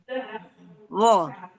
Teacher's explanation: huruf wo ini adalah ujung lidah bertemu dengan gigi seri atas